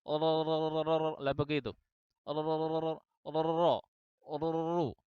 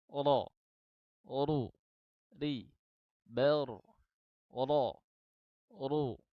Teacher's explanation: ini tetap terbuka tapi kemudian yang terjadi apa yang terjadi adalah ujung lidah ini akan menutup kembali kemudian didorong lagi terbuka lagi Kemudian menutup lagi dan seterusnya akhirnya berakibat kepada munculnya huruf ro yang tidak hanya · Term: huruf roknya terlalu banyak